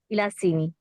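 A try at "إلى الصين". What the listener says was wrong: बेटे, इसको लाम को सौद से मिलाकर पढ़िए ना, इलस सीनी। इलस सीनी।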